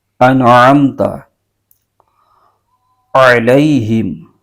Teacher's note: بہت سارے لوگ پڑھتے ہیں، انعمت، انعمت نہیں انعمت، عین حلق کے درمیانی حصے سے آواز نکالنی ہے